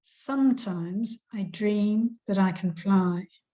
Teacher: the stress is on every second syllable